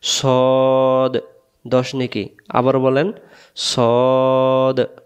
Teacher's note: মুখটা গোল হবে সদ। আর যদি আমরা বলি সোয়াদ, মুখটা ফাঁকা হয়ে যাচ্ছে, তখন এর উচ্চারণটা ভুল হয়ে যাচ্ছে।